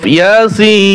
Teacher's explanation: ইয়া এক আলিফ টান হবে, সিন এখানে চার আলিফ টান হবে